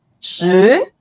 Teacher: The number 10 pronounced in the second tone with a rising pitch.